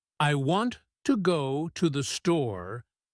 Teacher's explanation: the words want, go, and store are stressed. The others, I to the E, are said quickly and softly. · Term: stress-timed